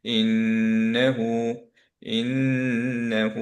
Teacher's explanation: প্রথম নুনটা গুণনা সহ থাকবে। সো আমরা পড়ছি ইন্নাহু, ইন্নাহু, ইন ধরে রাখলাম, ইন্নাহু এভাবে পড়বো না, আমরা বলবো ইন্নাহু।